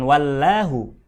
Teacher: apabila didahului oleh tanda koma oleh Arok aboma atau harokat fathah maka lafadz Allah nya mesti dibaca tebal alias tafkhim